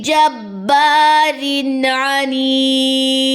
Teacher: را کے نیچے 2 زیریں ہیں، زیر تنوین کے بعد اگر عین آ جائے تو آپ نے وہاں پہ غنہ نہیں کرنا ہوتا، اور دال کی 2 زیریں جو ہے وہ وقف کی صورت میں ڈراپ ہو جائیں گی، عنید۔